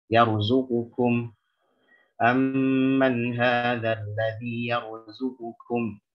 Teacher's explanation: qaf itu punya sifat jahar, punya sifat isti'la, sementara kaf itu lawannya hams dan istifal